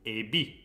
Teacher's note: The accent is on the last syllable.